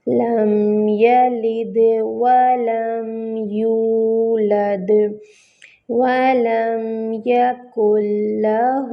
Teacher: واو میں جو ہے ہونٹوں کو مکمل گول کریں گے، میم ساکن ہے، میم کو ہلانا نہیں ہے۔ یولد، واو ساکن، اس سے پہلے ضمہ، واو مد بن رہی ہے، ہونٹوں کو مکمل گول کریں گے، دال پہ جو ہے وہ کلکلا ہوگا۔